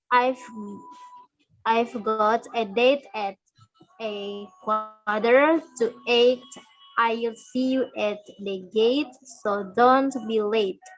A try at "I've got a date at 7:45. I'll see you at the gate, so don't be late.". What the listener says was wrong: Yeah, excellent.